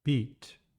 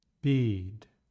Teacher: Pay attention to the difference between the short flat tone and the long drop tone.